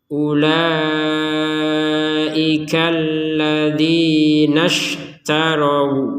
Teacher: Jadi hamzahnya enggak terbaca, langsung ke shin. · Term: hamzatul wasl